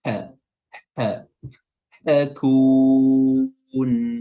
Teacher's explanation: huruf ha di tenggorokan tengah wasatul halq